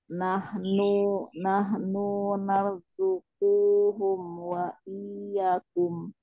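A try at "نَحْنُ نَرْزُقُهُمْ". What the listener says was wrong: Nahnunya satu harokat saja sama kunya juga. Kunya pendek, narzukuhum.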